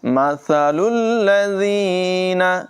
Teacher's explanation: سا جو ہے اس میں سیٹی کی آواز ہرگز پیدا نہ ہو، اسے ماسالو نہیں پڑھیں گے بلکہ سا کو بغیر سیٹی کے پڑھیں گے